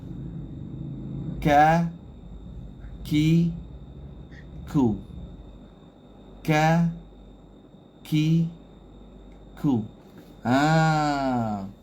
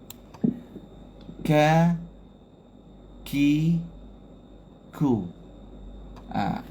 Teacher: Dia tahan suara dulu baru lepaskan udara. Jadi tahan dulu tengok buat tahan, kena letak makhraj dulu. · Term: syiddah